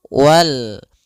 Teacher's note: Maka kembali lagi kita namakan dengan alif lam qamariyah, yaitu alif lam yang ditulis dan dibaca. Alif lam qamariyah, yaitu lamnya dibaca dengan jelas suara lamnya.